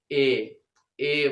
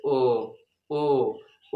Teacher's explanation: लोग गौर करिएगा ठीक है जैसे ए ए बोल रहा हूं इसमें थोड़ा अधिक मुंह खुल रहा है लेकिन आधे से कम खुल रहा है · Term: अर्ध संवृत स्वर